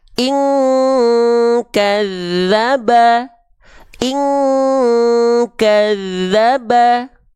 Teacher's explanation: dengungannya kuat ing Semuanya masuk hidung